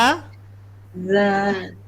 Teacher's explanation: Antara gigi depan. Antara dua gigi depan. Jadi za.